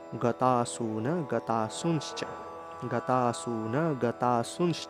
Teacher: এই যে অনুস্বারটা মাঝখানে রয়েছে সেক্ষেত্রে উচ্চারণটা ন এর মত